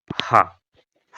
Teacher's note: हा आपका कंठ होता है महाप्राण होता है और सघोष होता है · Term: कंठ महाप्राण घोष व्यंजन